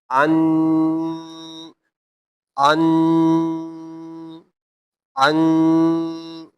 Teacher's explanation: This is gunna. And while if noon comes with sukoon, a gunna sound will be made in nose.